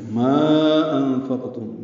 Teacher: ما انفقتم مد منفصل ہے، مدہ کے بعد حمزہ کی وجہ سے